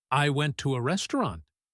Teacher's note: Her voice will go up on the last word.